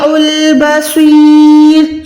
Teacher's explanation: صوت موٹا ہوگا اور رو پیش ہے، لیکن ہم یہاں پر وقف یعنی اسٹاپ کر رہے ہیں تو ہم نے یہاں پر رو ساکن کر دینا ہے